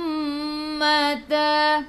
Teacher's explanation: mim bertemu dengan mim idgham mislain, masuk ke dalam mim yang kedua